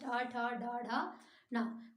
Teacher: वाला हिस्सा ऊपर टच होता है मुंह के भीतरी भाग में मुंह के भीतरी भाग में जीव के आगे का हिस्सा टच होता है जो कि आपका मूर्धन्य कहलाता है और इसके अंतर्गत ट ठ